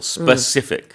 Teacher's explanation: the emphasis is on that second syllable